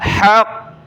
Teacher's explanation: جب رکیں گے تو قاف مشدد ہے یعنی قاف پر تشدید ہے، تو سختی کے ساتھ ہم نے یہاں وقف کرنا ہے، حق۔ والوزن یومئذ الحق۔